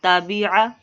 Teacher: عین کو بالکل بھی دراز نہیں کریں گے، نہ با کو نہ تا کو